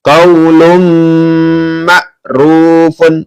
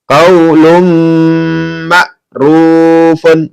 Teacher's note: Ini ada tanwin bertemu dengan mim, maka masuk dengan mendengung ya.